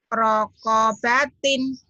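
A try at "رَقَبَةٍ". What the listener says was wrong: Nggak ada yang panjang.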